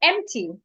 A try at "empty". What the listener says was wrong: Saying hem. There is no H there. You're adding H again. The logic is, whenever you want to pronounce words that start with vowels, hold your breath.